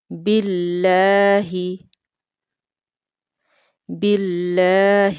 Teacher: اللہ کے اسم سے پہلے حرف پر اگر زیر ہوگی تو اس میں اللہ کی لام کو باریک پڑھا جائے گا۔ لام کے اوپر تشدید ہونے کی وجہ سے اسے شدت کے ساتھ پڑھیں گے